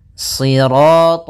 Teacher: shad itu pangkal lidah kita terangkat dan melekat karena dia huruf idbaq siro. Kemudian rnya ro tafkhim. · pada lafal sirat ya kembali lagi di sini shadnya tebal jangan dibaca dengan huruf sin